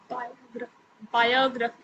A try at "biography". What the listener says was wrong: Yeah, you are getting smarter, okay, in pronunciation.